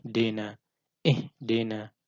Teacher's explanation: kurang memeringiskan bibir ketika membaca kasroh, sehingga yang seharusnya dibaca I menjadi terdengar agak miring jadi E